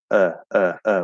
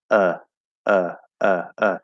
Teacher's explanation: bowl shape but if i give myself more space uh uh it's gonna sound slightly different a little more open that's actually more of like the upside down v